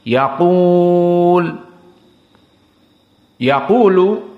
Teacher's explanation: jika kita berhenti pada lam yaqul, maka di sini hukumnya mad arid lisukun, bisa 4, bisa 6